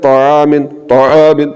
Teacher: زبان کی جڑ اور زبان کے درمیان والے حصے کو تالو کے درمیان والے حصے سے ملانا ہے